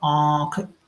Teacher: देखिए, मुंह भी ओपन हो रहा है और नाक भी, दोनों में से साउंड आ रही है।